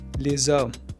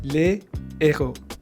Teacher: H muet, silent, allows linking, and H aspiré, blocks linking.